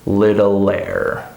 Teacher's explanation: We link this L sound to the following vowel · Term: linking